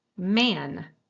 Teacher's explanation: It's very different than the a in man, right? Man has a different a, and you can hear how much more nasally it is because it's between these two nasals, and yet you still hear it as a.